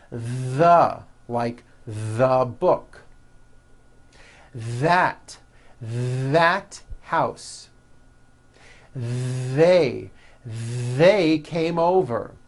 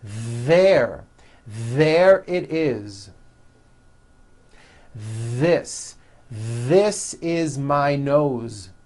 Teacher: That's the voiced TH. You should be able to feel a strong vibration in your throat and on your tongue.